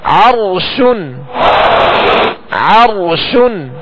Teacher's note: اب را ساکن سے پہلے والے حرف پر زبر کی علامت ہے لہذا را کو پر یعنی موٹا پڑھیں گے۔